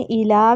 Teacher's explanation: الہ میں لام کو ہم لمبا کر رہے ہیں لیکن ہا کو نہیں کھینچنا. الہ اس طرح سے نہیں پڑھنا آپ نے.